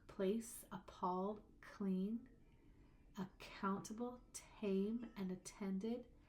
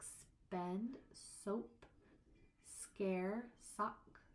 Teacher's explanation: You can feel that little puff of air come out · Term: aspiration